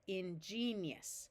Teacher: it tends to be pronounced more like 3 syllables because this I sometimes, instead of a clear E sound, will have a sound more like a Y of yus. Ingenious.